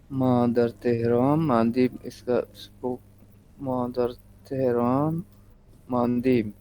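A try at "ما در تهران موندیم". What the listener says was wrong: اچھا، موندن کا اسپوکن دیکھیں کیا ہو جاتا ہے. الف، جیسے آمدن میں بھی الف واو میں کنورٹ ہوتا ہے. موندی، ما در تہران موندی.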